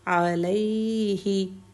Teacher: عین کا مخرج، عین کی سنگل حرکت، گلے کے بالکل سینٹر سے